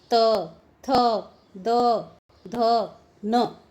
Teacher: त वर्ग के वर्णों का जब हम उच्चारण करते हैं तो दांत से स्पर्श होती है हमारी जीवा